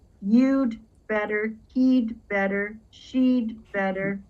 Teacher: you're going to hear native English speakers contract the had to duh